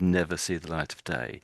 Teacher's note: I sort of rushed the words a little bit, so when it's an idiom, often it's sort of said almost as if it's one word